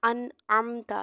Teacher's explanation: ना नाक में नून की आवाज को छुपाना और ना ही हम लोगों ने इस पर गुना करना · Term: इजहार